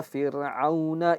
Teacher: Karena huruf sukun ro sebelumnya ada huruf kasrah maka dia akan menjadi tipis-tipis